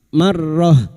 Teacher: Wakaf di sini untuk menyesuaikan kemampuan nafas kita. Maka ta marbuto yang berharakat kasrat tanwin dibaca sukun.